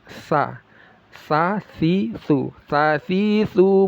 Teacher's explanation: ujung lidah makhrajnya yang menempel ke ujung gigi seri atas. Sa si su, seperti digigit ya.